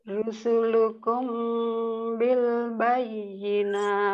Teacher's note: mim sukun bertemu dengan huruf ba, ikhfa safawi, dibaca samar-samar ya.